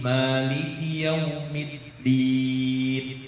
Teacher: huruf dal itu tidak punya hamas, tidak ngobos. Ya. Bukan maliki yaumiddin, di ada angin, percikan angin.